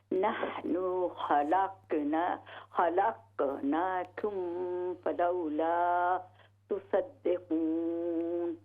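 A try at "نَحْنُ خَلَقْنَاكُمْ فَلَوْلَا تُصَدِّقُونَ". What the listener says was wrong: جی اس قاف کو پھر باؤنس کریں، قلقلہ. نحن خلقناکم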